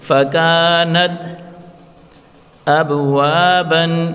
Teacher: با حروف قلقلہ ہے، اس کو اپنی مخرج سے ہلا کر پڑھیں گے